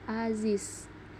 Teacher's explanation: bila sebagai koda dilafalkan sebagai bunyi Z atau S, misalnya pada kata aziz